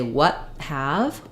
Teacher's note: I use an unreleased T and I use the H consonant sounds